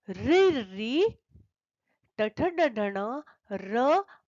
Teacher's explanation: इनका उच्चारण स्थान मूर्धा है इसलिए इन वर्णों को कहते हैं मूर्धन्य